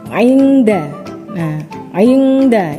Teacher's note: non mati bertemu dengan huruf Dal yaitu Ayunda nah Ayunda ini suara samarnya lebih tinggi dari suara dengung nya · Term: akrab